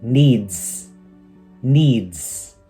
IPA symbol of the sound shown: z